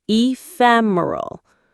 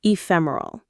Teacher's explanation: Notice the stress is on fem again.